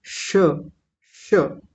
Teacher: श का आप श बोलिए तो जीभ हमारी मुड़ के तालू पर जाकर के लगेगी। बोलिए श हल्की सी जीभ घूमेगी गोल होगी और घूम कर के तालू पर जाकर के लगेगी · तो ध्यान दीजिए सभी लोग यहाँ अच्छे से, जहां हमारा तालु होता है वहीं से इसका उच्चारण करेंगे, श का। आप श बोलिए तो जीभ हमारी मुड़ करके तालु पर जा करके लगेगी। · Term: तालव्य शकार